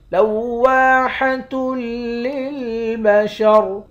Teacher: واو کے بعد الف ہے، الف حرف مدہ ہے، ایک الف کے مقدار کھینچیں گے، آخر میں را ساکن ہے۔